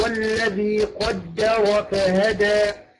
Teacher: الراء مفخمه لانها مفتوحه